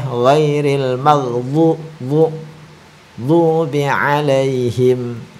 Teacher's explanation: Dha itu ujung lidah itu kan di gigi atas samping kiri atau samping kanan boleh. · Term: huruf dhat